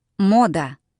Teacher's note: Emphasis goes here on the O.